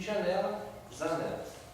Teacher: Os fonemas palato-velar surdo e palato-velar sonoro são preferencialmente substituídos pelo fonema S e Z. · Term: substituição